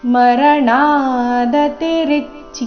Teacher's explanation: ಮರಣ ಣ ದೀರ್ಘ ದತಿ ಎರಡು ರಸ್ವ